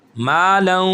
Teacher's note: ناک میں آواز کو لے کر جائیں گے، یہاں پہ غنہ بھی ہوگا اور ادغام بھی ہوگا. غنہ کہتے ہیں ناک میں آواز کو دبا کے رکھنا، ایک الف کے برابر دبا کے رکھنا، اس کو کہتے ہیں غنہ.